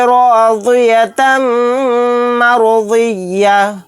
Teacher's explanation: यहाँ पर ता को मीम में मिलाते हुए गुन्ने के साथ पढ़ेंगे क्योंकि यहाँ पर मीम मुशद्दद है।